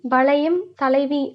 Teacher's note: தனக்குரிய மாத்திரை அளவிலிருந்து குறைந்து ஒலிப்பது ஐகாரக் குறுக்கம்னு சொல்றாங்க